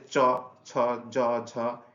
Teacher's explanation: চ, ছ, জ, ঝ এটা আমাদের তালব্য বর্ণ